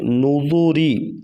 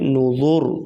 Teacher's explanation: نوذوری میں را وصل کی صورت میں باریک پڑھی جائے گی، لیکن وقف کی صورت میں را پر موٹی پڑھی جائے گی۔